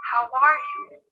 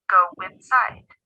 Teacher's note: If a word ends in the sounds o, or ow, and the next word begins with a vowel, then the 2 words are linked with w. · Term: linking words with the w sound